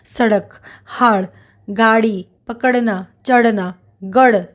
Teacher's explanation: इनका उच्चारण करते समय जीभ झटके से ऊपर जाती है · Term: ऊपर फेंका हुआ व्यंजन